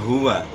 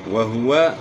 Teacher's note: ہا کی بات گلے کے آخر سے نکالنی ہے